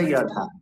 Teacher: সংস্কৃত শ্লোক উচ্চারণে অন্তস্থ জকে ইয় উচ্চারণ করতে হবে, ইয়